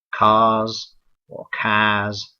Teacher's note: And of course, you can hear the main difference there would be that the R in cars is not pronounced in the received pronunciation, whereas it is pronounced in the standard accents of the United States and Canada. Also, the accents of Australia and New Zealand and also South Africa, like most of the accents of England, they tend to be R-less or non-rhotic